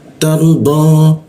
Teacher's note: untuk membaca do itu lidah bertemu gigi geraham